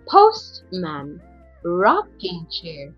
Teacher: Okay, a single idea treated as a noun. So, again, stress is on the first word. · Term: compound noun